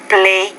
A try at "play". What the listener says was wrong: Again, the longer vowel sounds are harder for you.